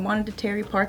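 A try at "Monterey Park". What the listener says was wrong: Monterey. Monterey. You don't even say the T.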